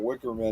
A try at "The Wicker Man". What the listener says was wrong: You just made it one word and made it sound like a Hebrew last name. You said Wickerman. You say, you, you didn't say Wicker Man. You said Wickerman.